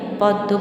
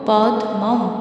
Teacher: উচ্চারণে বাংলায় মটার উচ্চারণ হয় না, সংস্কৃতে কিন্তু হবে পদ্মম।